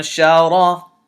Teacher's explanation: Now notice on this noon I hid the noon. I held it in my nose a little bit and I said shara. I didn't say anshara.